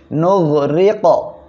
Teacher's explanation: ওয়া ইন্নাশা, নুন গাইন পেশ নুগ, নুগ, র কফ জের রিক, র অক্ষরের নিচে জের আসছে চিকুন করিয়া পড়বেন, আর কফ কলকলার অক্ষর সাকিন অবস্থায় আছে, ধাক্কা দিয়ে পড়তে হবে